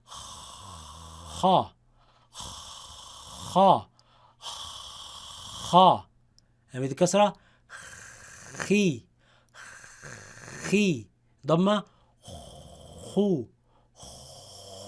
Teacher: from between the root of the tongue against the soft palate